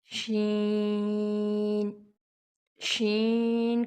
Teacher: شین، شین کا بھی وہی مخرج ہے جو جیم کا ہے، یعنی زبان کا بیچ جب تالو کے بیچ سے لگے گا تو شین ادا ہوگا۔